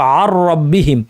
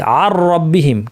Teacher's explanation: গুন্না ছাড়া ইদগাম হবে, অর্থাৎ নুনকে র বানিয়ে দুইটা রকে যুক্ত করে তাসদিদ দিয়ে একটি র বানিয়ে আমরা পড়বো